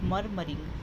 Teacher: मर पे अपन एम्फसाइज कर रहे हैं, जोड़ दे रहे हैं। और जो मरिंग, तो पीछे वाले दो जो सिलेबल्स है उसको हम स्ट्रेस नहीं कर रहे हैं। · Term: डेक्टाइलिक